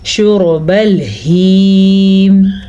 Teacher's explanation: وہ یا کھینچ کے لمبی کر کے پڑھی جاتی ہے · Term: یا مدہ